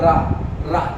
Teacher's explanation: लुंठित या प्रकंपित व्यंजन कौन से होते हैं आपके, वो होता है आपका रा। रा, जब भी आप रा बोलेंगे तो आपका जीभ लड़खड़ाती है, लुंठित होती है एकदम। तो इसलिए इसमें लुंठित या प्रकंपित, जब भी आप रा बोलते हैं तो कंपन करती है तो जीभ, तो इसलिए आप इसे प्रकंपित व्यंजन कहते हैं, ठीक है।